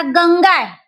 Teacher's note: म्हणतात म्हणजे अनुस्वाराच्या पुढे पहिल्या पाच वर्गातील व्यंजन आले असेल तर त्या अनुस्वाराचा उच्चार आणि लेखन पुढील व्यंजनाच्या वर्गातील शेवटच्या अनुनासिका सारखे म्हणजे पंचम वर्णासारखे केले जाते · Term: परसवर्ण